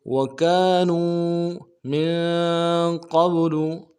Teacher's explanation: काफ के साथ अलिफ मद्दा है एक अलिफ दाल में खींचेंगे, नून को वाव के साथ मिलाएंगे, वाव मद्दा एक अलिफ दाल में खींचेंगे